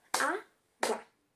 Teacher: Na palavra água, a sílaba mais forte é o A. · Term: paroxítona